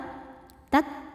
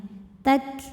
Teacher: Untuk kaf yang sukun anginnya keluarnya belakangan ya setelah keluar suaranya.